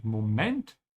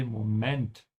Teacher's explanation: In English, you say moment, the stretch is here. So you have to consciously work against your old habit and say Moment with the emphasis at the end.